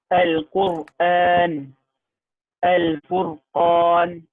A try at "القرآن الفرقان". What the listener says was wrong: Very good.